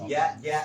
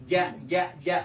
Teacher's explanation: Jadi tengah lidah ke langit-langit atas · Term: Jim